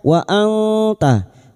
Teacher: Kita samarkan bunyi nun sukun dan mendengung selama tiga harakat.